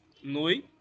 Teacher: Noite, separando, noite, onde o O é a vogal e o I é a semivogal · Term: ditongo